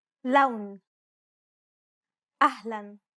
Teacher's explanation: to the way it's pronounced in the following words loan ahlan unlike the English L the tongue is ever so slightly flatter and straighter in Arabic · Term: the Arabic l sound, Arabic L sound